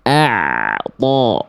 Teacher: Nah, sekarang kita kembali lagi ke ain sukun. Ain sukun dilarang untuk ditebalkan karena harusnya dibaca tipis.